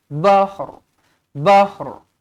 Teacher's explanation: Kita matikan ha, lepas tu kita datangkan huruf ra sedikit je dekat hujung tu.